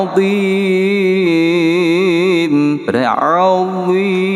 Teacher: Seperti yang kita baca sad dot Allah ya, bukan sad dot dot ya kan. Biasa kalau kita baca azim, azim ya, keluar ujung lidah sedikit.